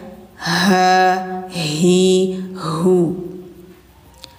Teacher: hunya itu tenggorokan dalam keluarnya ya.